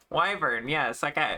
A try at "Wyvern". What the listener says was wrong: No, it's not. You said Weavern. You haven't said Wyvern yet.